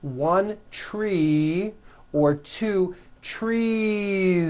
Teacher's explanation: voicing throughout the whole word and add on a voiced Z